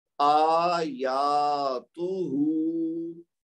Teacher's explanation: पहले हमजा को भी दो हरकत, फिर या को भी दो हरकत, और आखिर में हा को भी दो हरकत, लेकिन बीच में जो ता है ना उसको एक हरकत